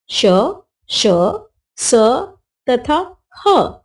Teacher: वे व्यंजन जिनके उच्चारण में वायु तथा मुख के आपसी रगड़ के कारण ऊष्मा गर्मी पैदा होती है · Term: ऊष्म व्यंजन